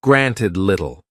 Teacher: Glottal stops are very common in British English and are made by closing the throat, blocking the flow of air very briefly before releasing it. Granted. Can you hear the slight pause in there?